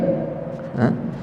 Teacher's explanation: Ya hamzah, ini bawah sekali halqum kita.